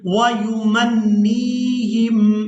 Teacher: نون کو یائے مدہ کے ساتھ ملاتے ہوئے کھینچ کر ادا کریں گے